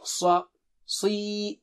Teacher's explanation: ص is very thick and high